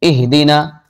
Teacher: گئے، یا قوی حرف کے قریب ضعیف حرف ہو، مثل اہدنا، اہدنا حمزہ قوی ہے اور ہا جو ہے ضعیف ہے